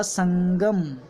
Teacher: लेकिन संगम में म की ध्वनि नहीं आएगी, न की ध्वनि आती है। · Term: अनुस्वार